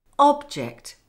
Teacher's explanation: the noun object can be pronounced with stress on the first syllable, meaning a thing.